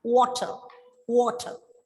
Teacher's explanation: at the end of the word r is silent